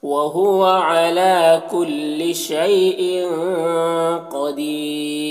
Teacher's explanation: وہو علی لام میں کھڑا زبر ہے ایک الف کے برابر کھینچیں گے. شی میں یا لین سے نرم آواز کے ساتھ جلد پڑھیں گے. ان کے تنوین میں اظہار حقیقی ہو رہا ہے، اخفا ہو رہا ہے، تنوین کی آواز کو ناک میں چھپا کر پڑھیں گے. · قدیر میں قاف کو پر پڑھیں گے اور یہاں پر بھی وقف کریں گے تو مد عارض وقفی ہوگا اور را کو باریک پڑھیں گے